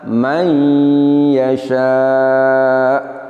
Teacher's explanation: hamzah kita sukun dan kita nabr atau nabrohkan, sedikit ditekan suaranya.